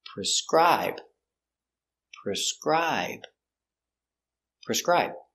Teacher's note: s PR PR PR preser i prescri prescri b prescribe prescribe the stress is on the second syllable · The stress is on the second syllable. Prescribe.